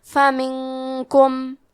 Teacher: کلمت فمنکم میں نون ساکن ہے، پھر حرف الکاف ہے، کاف حروف الاخفاء میں سے ہے تو ہم یہ حکم کو غنہ کے ساتھ ادا کریں گے